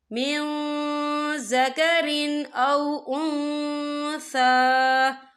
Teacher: یا دیکھیں من، یہاں نون ساکن ہے، نون ساکن کے بعد جو ہے زال آ رہا ہے، اور زال جو ہے اکفا کا ورڈ ہے، تو ہم یہاں اکفا کریں گے، نون ساکن کی آواز کو ناک میں چھپائیں گے